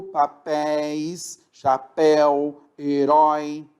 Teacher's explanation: Veja, eu não falei a terminação papéis, chapéu, herói. Eu falei com ditongo aberto, papéis, chapéu, herói.